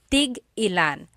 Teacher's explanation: So, tig-ilan, when there's a hyphen in it, you have to have that glottal stop.